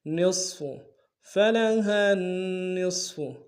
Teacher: نون کو صاد کے ساتھ ملانا ہے، صاد کو موٹا ادا کریں گے